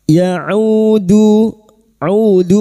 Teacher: huruf ain jangan tertukar hamzah huruf ain a i au wastul halqi atau tengah tenggorokan · duma bertemu wau sukun dua harakat kita panjangkan mad thabi'i